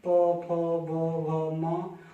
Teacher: प वर्ग के लिए आपकी जीभ या आपके होंठ आपस में स्पर्श कर रहे हैं, प, फ, ब, भ, म, और श्वास यहीं रुक रही है, थोड़ा सा रुक के आ रही है।